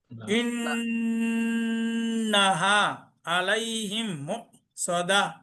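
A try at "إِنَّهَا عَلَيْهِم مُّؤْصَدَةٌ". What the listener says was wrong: ইন্নাহা, হাতে মধ্যে তো ভাই এক কালিফ টান তো একটু কম হয়ে গেছে। এই যে ইন্নাহা টান দিতে হবে, প্রয়োজন দুই আলিফ হোক সমস্যা নেই, এখানে টান এক আলিফ থেকে কম হয়ে যাচ্ছে।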